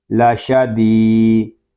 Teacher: یہاں یا مدہ ہو رہا ہے، ہم دال کو ایک الف تک کھینچ کر پڑھیں گے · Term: الف مدہ